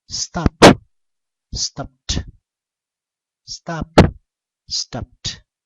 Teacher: La ED o la E en este caso es muda. Y la D suena como una T.